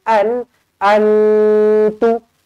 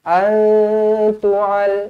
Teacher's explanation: nun kosong bertemu dengan ta, ikhfa hakiki, dengung 2 harokat